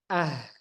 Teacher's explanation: Hamzah tadi contoh kalau kita sukunkan Ah masih ada suaranya jadi suaranya itu lepas suaranya lepas begitu saja tidak tertahan sedikitpun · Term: rakhaawah